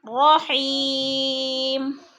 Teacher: وقف کی صورت میں دو پیش تنوین کو ہم نے ساکن کر کے پڑھنا ہے